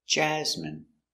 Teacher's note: stress the first syllable